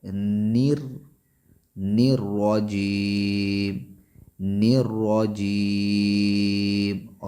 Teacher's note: را کو پر پڑھیں گے، موٹا پڑھیں گے تفخیم کے ساتھ